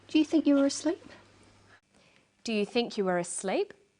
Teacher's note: her voice goes up at the end of the sentence we call this a rising tone the rising tone is used for yes no questions questions that